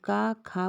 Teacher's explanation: जब हम का खा बोलते हैं तो किसी भी प्रकार से हमारे मुख के अंदर झंझनाहट नहीं होती है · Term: अघोष